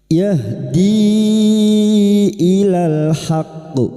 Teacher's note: bertemunya mad dengan hamzah di lain kalimat mad jaiz munfasil mad jaiz munfasil empat atau lima harakat kita panjangkan